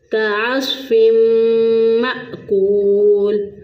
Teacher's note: پھر عین کو وسط حلق سے، صاد کو موٹا پڑھیں گے